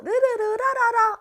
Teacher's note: 입의 양옆으로 흘러나오면서 소리가 만들어지기 때문이야. 따라서 얘를 흐름소리라고 해.